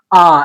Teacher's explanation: जैसे हमने कहा दीर्घ दीर्घ आ का जब उच्चारण करते हैं आ तो इसमें क्या होता है कि हमारा मुख जो है पूर्ण रूप से खुल जाता है।